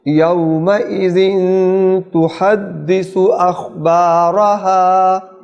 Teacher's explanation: یومئذ پر اخفا ہوگا، غنہ کریں گے